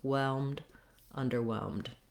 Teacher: So the whelmed syllable is still stressed. Then we have a little bit of secondary stress on the first syllable of under.